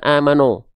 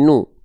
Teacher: vokalnya vokal u, bukan no, bukan membulatkan tapi memuncungkan. Amanu.